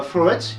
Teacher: Floret, il est accentué en première syllabe et pas en dernière